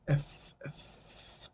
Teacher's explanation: the air escapes like probably somewhere between your upper teeth and your lower lip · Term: fricative